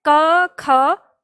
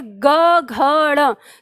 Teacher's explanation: जब आप बोलते हैं क ख तो बहुत मामूली सा आपको कंपन देगा, लेकिन जैसे ही बोलेंगे ग घ ड़ तो आपकी उंगली में वो कंपन महसूस होता है